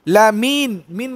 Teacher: লামিন, মিন বলার সময় কি হয়েছে? আওয়াজটা উপরের দিকে উঠছে।